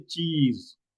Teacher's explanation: When you take the picture, generally we say cheese, because cheese has a long E, right? So when you say long E, you hold your lips widened for a longer time, gives you the appearance of a smile.